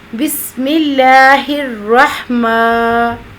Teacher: ما لمبا ہوگا، کھڑی حرکت ہے لیکن بہت زیادہ لمبا بھی نہیں کہ مد بن جائے